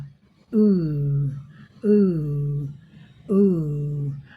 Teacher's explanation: यहां जो है बैक ऑफ टंग अप जीभ का जब हम लोग इसका उच्चारण करेंगे इस ध्वनि का तो क्या होगा? जीभ का पिछला भाग ऊपर उठेगा। · जीभ का पिछला भाग ऊपर उठेगा। बोल कर देखिए, ऊपर उठेगा ऊ ऊ ऊ।